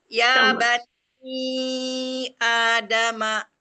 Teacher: pada kata ya bani ya di sini dibaca ee sebagai mad thobi'i dua harakat